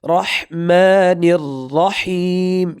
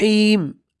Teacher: ہا کو اپنے گلے میں تھوڑا سا رگڑ کر کے پڑھنا ہے